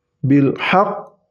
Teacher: ketika qauf sukunnya ditahan dua harakat Bil Haq kemudian dipantulkan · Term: huruf Qalqalah